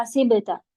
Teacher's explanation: با کو تھوڑی سی ساؤنڈ باقی رکھتے ہیں جسے قلقلہ کہا جاتا ہے